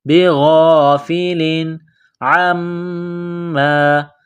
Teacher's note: تنوین کے بعد عین ہے، حروف حلقی ہے تو یہاں غنہ نہیں کریں گے، آواز ناک میں نہیں چھپائیں گے · بغافل عما، عین کو میم کے ساتھ ملانا ہے، میم مشدد ہے، غنہ کریں گے، آواز ناک میں چھپائیں گے